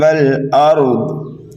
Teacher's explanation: حرف ضاد چاہیں آپ ملا کر کے پڑھیں یا وقف کر دیں یہ موٹا ہی پڑھا جائے گا کیونکہ یہ حروف مستعلیہ میں سے ہے